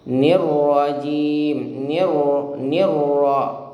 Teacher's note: sekali saja menempel tapi tidak terlalu kuat, ya, dan getarannya cukup satu kali saja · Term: Sifat takrirnya